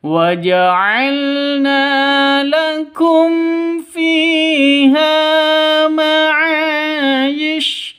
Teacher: Ma'a panjang dua ketukan karena ada alif diawali dengan fathah. Ma'ish, yish pendek. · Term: mad asli